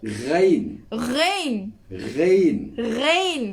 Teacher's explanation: Ghain wa kha, dia rasa getaran tu lebih kuat daripada ain dan ha.